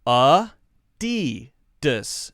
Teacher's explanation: notice that we're not saying the clear a sound this is what's called a schwa we're not saying a DDoS a DDoS it's not a DDoS